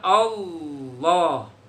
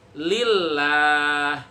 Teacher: Nah, itu namanya tafhim, tebel, beratin kalau bisa. Tahan, kuasain rongga mulutnya, penuhin dengan huruf L tadi.